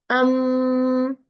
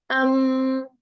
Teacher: It is a sound from nasal passage without any function of the tongue. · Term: nasal sound